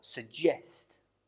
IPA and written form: səˈdʒest (suggest)